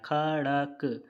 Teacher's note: पूरा का पूरा जो शब्द है वो कंठ से निकल रहा है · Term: कंठ ध्वनि